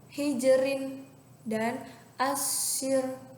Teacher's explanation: cara membaca ro-nya tipis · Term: ra tarkik